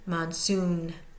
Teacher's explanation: we're going to hear the soon more so than the man in Monsoon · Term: primary